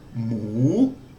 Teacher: a high class initial consonant with that o which is a live syllable gives us a rising tone